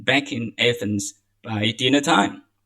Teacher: You link back and in